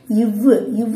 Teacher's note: அந்த கீழ் இதழ் வந்து பல்லோட போய் மோதுனுச்சுன்னா இவ்வு வந்து வரும் · இவ்வு சொல்லி பார்த்தீங்கன்னாலே தெரியும். இந்த கீழ் உதடு போய் எதோட போய் பொருந்தும், மேல்வாய் பல்லோட பொருந்தும்.